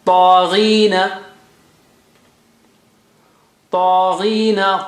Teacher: Gha is high sounding, but kasra is bringing it down, but still high.